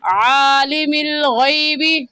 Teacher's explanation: عین حلق کے درمیان سے عین نکلتا ہے، نکال کر پڑھیں گے.